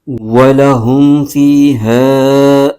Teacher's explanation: اور میم ساکن ہے، اس کو ہا کے ساتھ ملائیں گے، فا کے نیچے زیر ہے، اس کے آگے یا ساکن ہے، یہاں پر یا مدہ ہو رہا ہے، اس کو ایک الف کھینچ کے پڑھیں گے